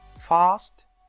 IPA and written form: fɑːst (fast)